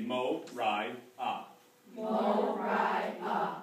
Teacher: the vowel on I and ah are the same vowel. It's just you finish them differently.